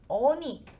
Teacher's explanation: 얼다 같은 경우에 얼다에 니가 붙으면 얼리가 아니라 어니 이런 식으로 리을이 탈락이 돼버립니다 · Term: 리을 탈락